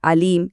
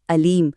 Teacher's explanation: अब अगर ऐन की जगह सिर्फ हमजा पढ़ दिया जाए तो यह बन जाता है अलीम